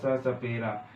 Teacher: जब ये स सपेरा वाला स बोलोगे तो ये दांत से जीभ टकराती है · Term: दंत्य स